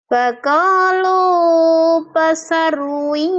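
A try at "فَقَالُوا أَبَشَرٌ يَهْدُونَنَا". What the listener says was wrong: Hanya A. A-nya jangan lupa. Faqalu abasyarui.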